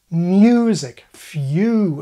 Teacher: the E part of the diphthong turned from a vowel into a consonant glide. In other words, our Y sound.